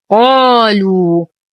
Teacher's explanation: نفخم القاف على درجات التفخيم فهي مفتوحة وبعدها ألف